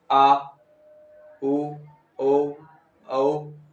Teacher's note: तो हमारी जबान कहाँ जा रही है? पीछे से, पीछे जा रही है। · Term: पश्चिम स्वर